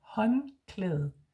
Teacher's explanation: H, A with a circle above, N, D, but that D is silent. So we go from a pronounced N to the K, håndklæde. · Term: silent D